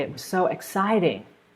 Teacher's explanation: So you're stressing that word, exciting, but you're also stressing the second syllable of the word, exciting. I hope that helps.